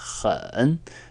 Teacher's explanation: for adjectives the word is hon in the third tone and notice this H is kind of like a scratchy sound in your throat